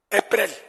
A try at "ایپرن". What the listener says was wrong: ایپرن آخر میں نون آئے.